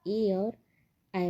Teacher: कंठ और तालु दोनों का स्पर्श होता है ए और ऐ बोलने में।